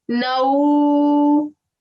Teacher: it's almost as if you're giving a na and a oo sound at the same time